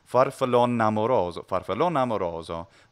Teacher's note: the final E might be elided completely